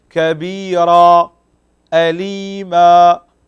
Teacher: مد عوض، يمد بمقدار حركتين